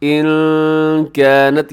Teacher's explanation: یہاں نون ساکن ہے اور نون ساکن کے بعد کاف ہے، آپ یہاں پر اخفا کیجئے گا